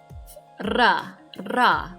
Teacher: the letter R in IPA indicates rolling of your tongue.